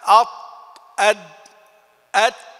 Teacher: وتسمى الحروف النطعية لأنها تخرج من نطع الغار الأعلى وهو سقفه